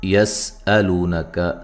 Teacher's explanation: سین کو باریک سیٹی سے ادا کرنا ہے، ہلانا نہیں ہے۔